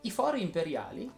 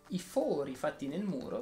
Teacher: i fori imperiali si pronunciano con la o aperta i fori fatti nel muro si pronunciano con la o chiusa